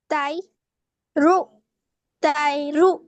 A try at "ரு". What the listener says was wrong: போதாது, ரூ தான் வருது, ரூ அல்ல. ரு ரு ரு ரு ரு ரு வித்தியாசம் விளங்குதா? ரு ரு அப்படி அல்ல, நாக்கு பின்னு கொண்டு போகணும். நாவு பின்னு தொண்டையோட பின் பக்கத்துக்கு நடுப்பக்கத்துக்கு கொண்டு போங்க நாவு. ரு ரு ரு ரு வேண்டா, நாக்கு முன் பல்லோட தான் நிக்குது, பின்னுக்கு அப்பாடு நாக்கு.